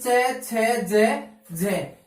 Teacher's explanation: तो अपनी परिभाषा क्या रहेगी? कि जिन वर्णों के उच्चारण में उच्चारण में समास वायु स्पर्श व संघर्ष के साथ मुख से बाहर निकलती है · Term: स्पर्श संघर्षी